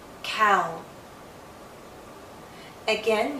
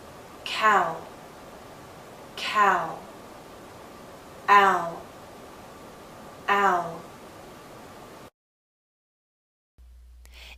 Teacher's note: So our lips are moving in to a circle. Not a tight one as in ooh, but approaching that.